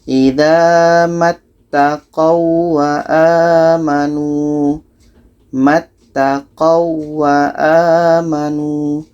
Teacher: ada waw mati bertemu waw tasydid. Ini tidak berlaku dengung. Bacanya biasa saja tanpa dengung.